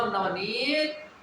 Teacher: नी को देर तक बोलना होता है